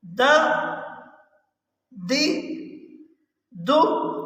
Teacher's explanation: زبان کی نوک کو سامنے والے دانتوں کی جڑ سے لگائیں گے تو دال ادا ہوگی